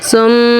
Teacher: मीम पे तद बनी हुई है यानी मीम पर एक अलिफ हमने गुना करना है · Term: मीम मुदत का गुन्ना